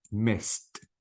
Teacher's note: the D should be replaced with t and I don't pronounce the e sound at all · Because the S is voiceless, not voiced. So any word ends with voiceless sounds, okay, I have to delete the E sound and I have to replace the D with T.